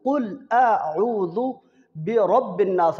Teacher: را کے اوپر پیش ہے، را کو موٹا پڑھیں گے